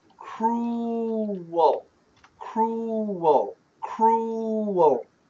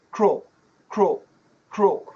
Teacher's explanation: So perfect pronunciation, cruel, cruel, cruel. Fast pronunciation, cruel, cruel, cruel. The W disappears.